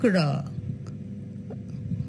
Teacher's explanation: র হচ্ছে আমাদের ঘোষ কম্পনজাত দন্তমূলীয় ধ্বনি।